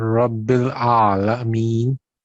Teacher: آئین کو 2 سیکنڈ تک لمبا کریں، اور رب جب مشدد ہے تو تھوڑا سا سخت اس کو تشدید کے ساتھ پڑھیں، اور را کو آپ نے ٹھیک موٹا کرنے کی کوشش کی ہے.